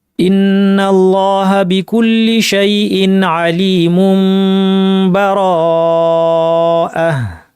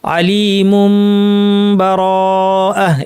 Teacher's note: যেহেতু তানবিনের পর বা আসছে, আলিমুম, মুনকে নুন সাকিন বা তানবিনকে চেঞ্জ করে মিম বানিয়ে মিমের গুন্নাটা লম্বা করে ইখফা করে আমি মিমের ইখফা করা, এখানে মূল নিয়মটার নাম ইকলাব কিন্তু মিমটা ইখফা হচ্ছে, সেভাবে আমরা পড়লাম আলিমুম বারাআহ।